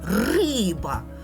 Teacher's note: перший склад ми промовляємо сильніше і голосніше риба на цей склад падає [музика] наголос поділимо слово сова на